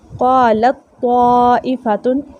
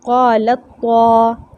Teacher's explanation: लाम को हमने अगले तौ में मुकम्मल तौर पे दाखिल कर लिया, पिछले ता की सिफ़त जो है वो बाकी नहीं है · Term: इदग़ाम